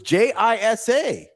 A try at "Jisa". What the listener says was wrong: In the pronunciation, there's no J.